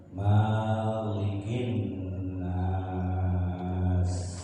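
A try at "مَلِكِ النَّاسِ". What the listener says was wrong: Ma-nya pendek ya. Kalau di Al-Fatihah panjang, Maliki Yaumiddin. Nah, kali ini Malikin Nas, ma-nya pendek, cepat. Malikin Nas.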